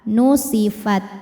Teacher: Tapi ada dari segi angin sifatnya hamas, ada anginnya fat. Nah untuk ta yang mati atau yang sukun, anginnya ini belakangan setelah keluar suara